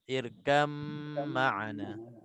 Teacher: Walaupun ada ba sebesar-besar ni, tak baca qalqalah ba. Daripada ka terus lompat masuk ke dalam mim. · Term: idgham mutajanisain